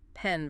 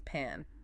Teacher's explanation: the mouth position for E, mid, relaxed as in pen, versus A, wide open as in pan